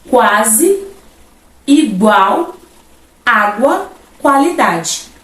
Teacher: o sentido de uma consoante por isso que teremos um ditongo Esse i e esse U não terão aí então o valor de vogal eles não terão tonicidade ali na pronúncia